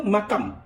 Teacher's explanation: Yang pertama, tukar nun tu jadi M, jadi mim.